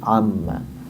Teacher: Nun diidgamkan kepada mim maka kemudian jadil mereka huruf yang satu si nunnya berubah menjadi huruf mim